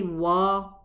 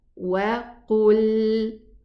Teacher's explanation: So I round my lips and then I open for the fatha sideways, not upwards. وقل. Elevated qaf.